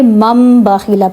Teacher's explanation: نون ساکن کے بعد اگر با آ جائے یا تنوین کے بعد اگر با آ جائے تو نون کی آواز میم میں چینج ہو جاتی ہے، ٹھیک ہے۔ اس کو من باخیلا نہیں پڑھیں گے، مم باخیلا پڑھیں گے، مم باخیلا، ٹھیک ہے، مم باخیلا۔ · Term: اقلاب